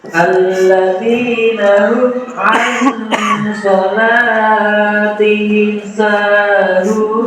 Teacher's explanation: Mad alif disukun, karena huruf mad jatuh sebelum huruf yang diwakafkan. Cara membacanya dipanjangkan 2 sampai 6 harokat.